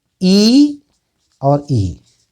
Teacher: ई और ई तालु से निकलते हैं